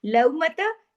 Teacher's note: लव मता, अब देखिए लव लव और लव फर्क है ना आवाज में, ये वावे लीन है, लीन में मोड़ पैदा होता है नरमी के साथ